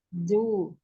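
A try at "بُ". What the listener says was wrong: Jangan bu. Bu. Ini terlalu apa, tepi lidahnya Anti ini terlalu sampai ke ini, ke apa namanya, keluar. Di gigi geraham yang luar, ya. Yang dekat dengan langit-langit samping itu ya. Bagian dalam mulut yang di pipi itu ya. Nah, jangan sampai situ, ya. Di bagian dalamnya aja, bagian dalam. Bo, bi, bu.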